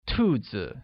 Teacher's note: is pronounced with a falling tone